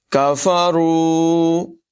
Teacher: را کو پر پڑھیں گے، لمبا کر کے پڑھیں گے